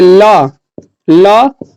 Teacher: जब आप ल बोलते हैं ल को बोलिएगा तो दंतिया में सटेगा